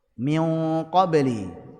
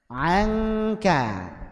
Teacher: Min qabli ngikut tebalnya qaf. Anka ikut tipisnya kaf. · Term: gunnah pada ikhfa hakiki